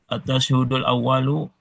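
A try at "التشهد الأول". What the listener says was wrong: Ya, tasyahud ya, bukan tashhud tapi tasyahud berharokat syaknya fathah. At-tasyahudul awwalu ala ghairi man qama imamuhu sahwan.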